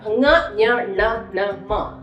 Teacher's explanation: വ്യത്യാസം മനസ്സിലാക്കുക അങ്ങനെ വരുന്നു ഇനി അഞ്ചാമത്തെ ഗ്രൂപ്പ് നമ്മൾ നമ്മുടെ മൂക്കിനാണ് പ്രാധാന്യം ഉച്ചരിക്കുമ്പോൾ മൂക്കിലാണ് അതിന് ഇമപോർട്ടൻസ് വരുന്നത് ഇതിനെ നാസിക്യ വ്യഞ്ജൻ എന്നാണ് ഇതിന്റെ പേര് പറയുന്നത് അഞ്ചാമത്തെ ഗ്രൂപ്പ് അക്ഷരങ്ങൾ നാസിക്യ